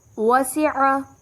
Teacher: عین حلق سے ادا ہوگا